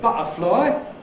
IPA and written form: ˈbʌʔəflɒɪ (butterfly)